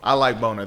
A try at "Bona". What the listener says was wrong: R. You put the hard R on it, bro.